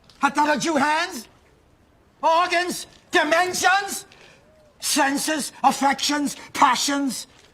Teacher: we will stress each item in the list, pause between them, and pronounce them with the rising intonation until we have reached the last item